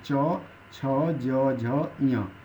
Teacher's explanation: इसी तरह से तालव्य में च वर्ग के सारे वर्ण आते हैं